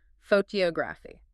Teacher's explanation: The stress completely shifts to the second syllable. The tongue and the breath naturally prioritize the most distinguishing part of the word.